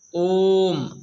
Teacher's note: अब ओ बोलने में काफी समय लग रहा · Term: प्लुत स्वर